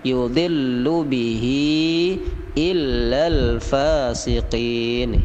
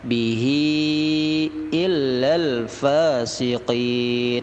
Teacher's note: Hi-nya panjang 6 harokat ya